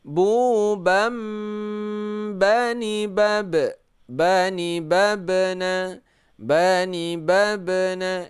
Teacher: Karena baris fathatain bertemu dengan ba, maka dibaca menjadi bunyi nun dibalikkan menjadi bunyi mim. Ini ada tanda-tanda mim kecil. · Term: iqlab